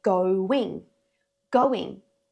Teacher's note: The word going has an intrusive w in the middle.